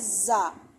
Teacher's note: زا سٹی کی آواز والا حرف ہے، اور دونوں دانتوں کو آپس میں ملائیں گے اور پڑھیں گے زا، ٹھیک ہے۔